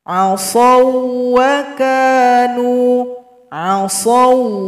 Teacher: huruf Fa Nah ya jumpa huruf yang sama maka di sini dibaca tanpa dengung dibaca pendek tanpa dengung